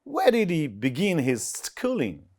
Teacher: So here stress falls on the second syllables in begin. In schooling, it falls on the first syllables.